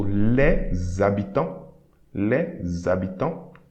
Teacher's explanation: the letter S will create a sound Z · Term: liaison